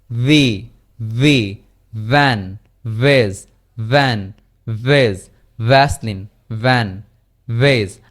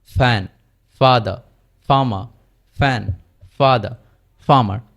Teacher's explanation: সো F যে জায়গা থেকে উচ্চারিত হয়েছে, উপরের দাঁত এবং নিচের ঠোঁট, এখানে শুধুমাত্র কি আমাদের এই যে ল্যারিংস রয়েছে এটি শুধু কম্পিত হবে না এফ এর ক্ষেত্রে, কিন্তু ভি এর ক্ষেত্রে কম্পিত হবে।